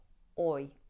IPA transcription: ˈɔɪ